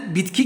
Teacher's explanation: G burada sertleşip k'ye dönüyor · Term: sertleşme